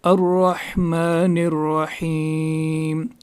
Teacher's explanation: اس ہا کو بھی حلق کے درمیانی حصے سے نکالنا ہے